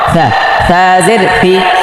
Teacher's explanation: জিব্বার আগা সামনের উপরের দুই দাঁতের আগায় লাগিয়ে থা নরম